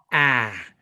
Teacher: it's low and in the front very American sound